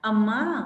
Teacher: अम्मा में भी यहाँ पर अ का स्वर थोड़ा लंबा जा रहा है, यानी ह्रस्व स्वर से तिगुना समय लग रहा है, 3 गुना समय होने के कारण यहाँ पर ये चिन्ह लगा दिया जाता है। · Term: प्लुत स्वर